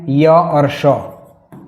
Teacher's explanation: य और श इन वर्णों का उच्चारण स्थान तालु है